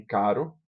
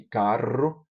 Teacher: As vibrantes entre si, como em caro, vibrante simples, e carro, vibrante múltipla. A gente aqui no Nordeste não pronuncia isso como vibrante múltipla, mas a gente pronuncia isso como aspiração, carro.